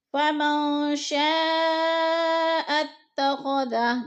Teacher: شاء اتخذ، شاء پہ جو ہے مد ہو رہی ہے، مد متصل، حروف مدہ کے بعد حمزہ اسی کلمے میں ہے تو مد متصل یعنی 4 الفی مد ہے، ہم نے اس کو 4 حرکات کے برابر کھینچ کر پڑھنا ہے۔